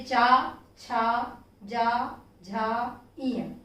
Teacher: इसी प्रकार जब हम चवर्ग का उच्चारण करते हैं तो हमारे जिह्वा का पश्च भाग, जब हवा फेफड़ों से आती है तो जिह्वा के पश्च भाग के ऊपरी हिस्से को छूते हुए बाहर निकलती है